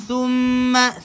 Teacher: thumma keluarkan lidah, mim sabdu wajibul gunnah